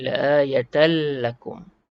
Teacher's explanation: Tanwin, jumpa huruf lam, idgham bila gunnah. Mengidghamkan tanwin ni dengan tanpa dengung. La'ayatan jadi la'ayatal lakum.